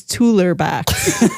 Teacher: he couldn't say the K sound, so it was a T sound. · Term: fronted